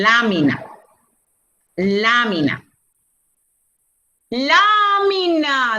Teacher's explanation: ¿dónde está el eco? En la antepenúltima sílaba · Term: esdrújula